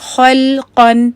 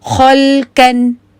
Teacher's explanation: مثال کے طور پہ آپ نے جو آپ کا تیسرا لفظ ہے اس کو اگر آپ دیکھیں تو وہاں پہ ہے خلقن، تو یہاں پہ اگر آپ دیکھیں تو یہ خا ہیوی ہے، لام لائٹ ہے، اور قاف پھر ہیوی ہے. تو خا اور قاف کے اوپر آپ لوگ ایچ لکھ سکتے ہیں، کیونکہ اس کو اکثر اسٹوڈنٹس پڑھتے ہیں خلقن، تو وہ اس کو جو ہے نا لائٹ پڑ جاتے ہیں کیونکہ وہاں پہ جو ہے ان کو بھول جاتا ہے.